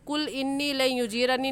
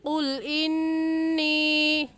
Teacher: قاف موٹے حروف میں سے ہے، موٹا کر کے پڑھیں گے، اور موٹا کرنے کا طریقہ یہ ہے کہ آپ کے دونوں ہونٹ گول ہو جائیں